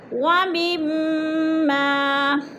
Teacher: میم پہ ادغام ہو رہا ہے اور غنہ کریں گے، سختی سے جمع کر پڑھیں گے